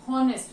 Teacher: Here the first letter is not a vowel, first letter is a consonant, but the sound which is coming from this word there is honest, means H is silent there. We are not pronouncing H, honest, we are saying honest.